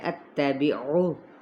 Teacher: عین کو وسط خلق سے ادا کرنا ہے، پیش کو کھینچنا نہیں